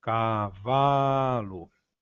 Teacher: a sílaba tônica de cavalo é o vá, pois pronunciando a palavra numa queda de abismo temos cavalo.